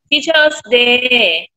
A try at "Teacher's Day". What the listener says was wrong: Do not forget to remove the I. Do not forget to put the letter S there, teacher.